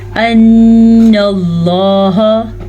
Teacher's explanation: لفظ اللہ کو ہم پر پڑھیں گے کیونکہ پیچھے زبر ہے اور غنہ بھی ادا کریں گے.